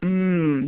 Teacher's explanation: you notice that your mouth is closed and the air is coming out through your nose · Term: M sound